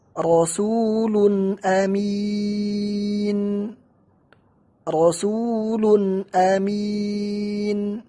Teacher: Di sini ada tanwin rasulun dan setelahnya hamzah, dan hamzah termasuk huruf halq. Cara membacanya tanpa tambahan di gunnah yang ada di tanwin. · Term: izhar